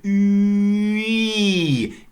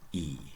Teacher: If you say Ü and you unround it, Ü, it turns into E.